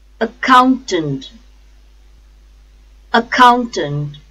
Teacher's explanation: The stress is on second syllable, count. Accountant, count, accountant.